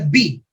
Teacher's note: You start pronouncing B with your lips closed, right? So may stricture, may block.